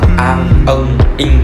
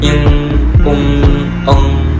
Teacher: các cái âm này khi phát âm đều phải lên mũi, nhưng người Việt mình thì thường bỏ hết tất cả âm lên mũi, mà các bạn sẽ đọc là ang, ưng, ing. · Các bạn thấy không, cái mũi mình nó rung ấy, thì mới đầu học mình phát âm cái âm này rất là mệt, rất là mỏi mũi luôn ấy.